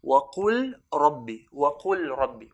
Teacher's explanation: So the lam would have merged onto the ra. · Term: al-idgham